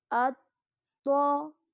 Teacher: طا موٹا بھی پڑھا جائے گا اور اس کو پڑھتے ہوئے ہمیں جماؤ کا خیال کرنا ہے، یعنی طا کو پڑھتے ہوئے ہمیں جماؤ کی طرح پڑھنا ہے۔